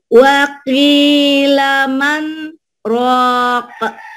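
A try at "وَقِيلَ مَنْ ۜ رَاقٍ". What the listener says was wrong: Satu, iya dua harokat aja paling. Man jangan kelamaan. Wa qila man rok kelamaan, cuman sebentar aja. Wakilaman rok, feeling aja sih bermain ya, sedikit ya, paling satu dua ketukan lah gitu yang ininya ya.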